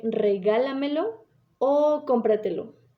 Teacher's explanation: es la que tiene la fuerza antes de la antepenúltima es decir contando desde el final a la cuarta o incluso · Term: sobreesdrújula